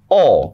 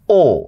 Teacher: অ উচ্চারণের ক্ষেত্রে মুখটা তুলনামূলকভাবে বেশি খোলা। আর ও উচ্চারণের সময় মুখটা তুলনামূলকভাবে বন্ধ। এটাই বলা হচ্ছে অ ধ্বনির বিবৃত উচ্চারণ মানে হচ্ছে অটা।